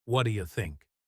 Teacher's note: The T at the end of what blends with the Y sound of U. This can be very confusing for learners because it sounds like one long word. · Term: connected speech